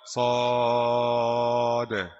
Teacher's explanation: jadi berhenti di atas sad pakai sukun dengan qalqalah